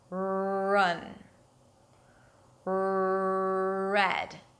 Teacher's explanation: So basically it's a W sound mixed with this tense okay? I like to think of it as if it's a W with a Y sound or a W with an L sound without touching the upper palate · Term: strong R